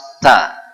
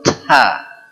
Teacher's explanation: huruf ta Hames memang sifat dia Hames cukup tertiup nafas ta cukup tidak perlu thaa ya kemudian atau diganti kemudian tabbat